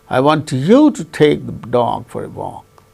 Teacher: so the tonic syllable is to be uttered with falling tone